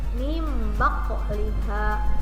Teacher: Nun ketemu ba, bacanya bukan min ba, tapi mim, masukin ke mim. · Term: iklab